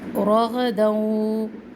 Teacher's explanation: रॉ को भी पुर पढ़ना है, ग़ौन को भी पुर पढ़ना है। तनवीन के बाद वाव है, दोनों को मर्ज करेंगे, इदगाम का कायदा है।